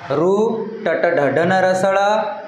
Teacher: हे उच्चारण करतानी वर जे आपली जीभ आहे वर मूर्ध्याला टच होते मृध्याला स्पष्ट स्पर्श होते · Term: मूर्धन्य वर्ण